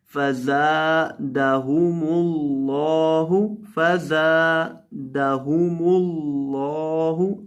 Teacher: زا کو جب بھی پڑھتے ہیں اس میں سٹی پیدا کرتے ہیں